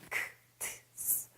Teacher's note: 무성음은 크, 트, 스, 바람 소리로 내야 하기 때문에 발음하기가 다소 어렵습니다